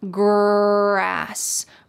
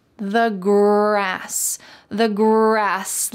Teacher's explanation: in American English, we often call this the colored R because it's very strong.